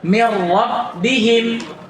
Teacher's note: Kamil, karena nun sukun hilang lafadznya dan sifatnya. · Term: idgham kamil